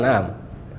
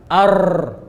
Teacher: Lihat, bergetar lidah kita. Ar. Nah, ini maksud takrir ini.